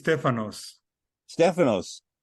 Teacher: we have the stress the stress on the first syllable